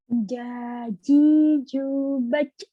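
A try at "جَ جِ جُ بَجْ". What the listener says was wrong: Jangan bac gitu, nyantai aja. Baj gitu. Pokoknya jangan ditahan, jangan bac gitu ya, jangan berlebihan. Harus ngalir. Baj, biasa aja. Baj.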